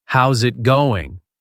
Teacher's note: It sounds more like how's it going? The S from how's links to the I in it. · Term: connected speech